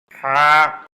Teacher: গরম বাতাসের সাহায্যে উচ্চারিত হবে, বাংলা আকার প্রকাশ পাবে